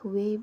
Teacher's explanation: artikulatornya aktifnya adalah bibir bawah dan artikulator pasifnya adalah bibir atas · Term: semi vokal